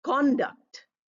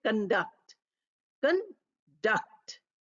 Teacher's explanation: If we use this word as a noun, we say conduct. And if we use it as a verb, we say conduct. Conduct. Second syllable stress.